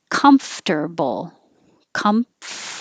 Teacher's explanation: an m and then an f comf and you need to have time for air flow before you go to the tee